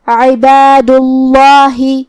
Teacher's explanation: جو کہ یہاں لفظ الجلالہ ہے، مطلب کلمت اللہ، تو یہاں لفظ الجلالہ کا حکم ہے تفخیم، ہم یہ کلمہ کو بھاری آواز میں پڑھیں گے کیونکہ اس سے پہلے والے حرف پہ مطلب حرف الدال پہ